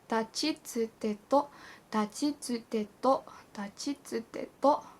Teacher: the T sound, if you want to call it that, is not aspirated.